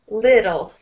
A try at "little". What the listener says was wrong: Can you make your I sound like mine? Little.